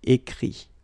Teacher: Remember that phonetically this final T doesn't exist.